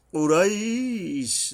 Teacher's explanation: বড় কফ উচ্চারণে সাবধান হতে হবে, হলকের গোড়া থেকে শক্তভাবে আদায় হবে